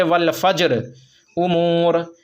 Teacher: مطلب یہ کہ یہاں رائے ساکنہ ہے اور رائے ساکنہ سے پہلے جیم ساکن ہے، جیم پر جزم ہے تو جیم ساکن ہوا، اور اس سے پہلے والے حرف پر چونکہ زبر ہے تو اب اس رائے ساکنہ کو پر پڑھیں گے، جبکہ اس پر وقف کریں گے، یعنی ٹھہریں گے تو اس کو پر پڑھیں گے، اور اگر نہیں ٹھہریں گے تو باریک پڑھیں گے۔